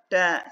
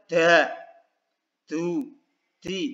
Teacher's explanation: jangan berlebihan ketika menghembus udaranya ya saat mengucapkan ta